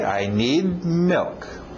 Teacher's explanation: Engole aquele D no final